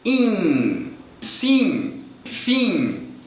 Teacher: nenhum falante de português vai ler o n ou M os dois vão fazer exatamente a mesma coisa vão provocar uma nasalização da vogal anterior in sim finim sem que ninguém Leia o que está escrito